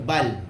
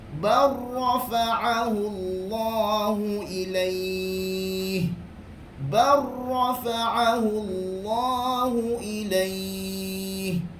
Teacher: Masuk terus. Lam tidak dipandang sebab idgham